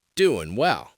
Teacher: And notice, I dropped the G in doing too.